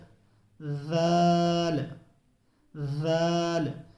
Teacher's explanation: ذال میں جو ہے ثنایا علیہ پر زبان کا کنارہ لگے گا، زبان کی نوک لگے گی